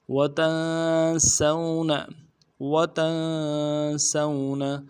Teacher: सीन को वाव के साथ मिलाना है, वाव लीन है बगैर खींचे पड़ेंगे, सीन को बारीक करेंगे, नून को नरम से अदा करेंगे।